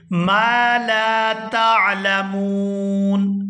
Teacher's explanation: میم کے ساتھ بھی الف مدہ ہے اور آگے لام کے ساتھ بھی الف مدہ ہے، تو دونوں کو کھینچ کر ادا کریں گے